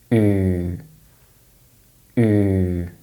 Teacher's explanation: sound is generally produced with the middle of the tongue raised in modern pronunciation. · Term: oo sound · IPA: /u:/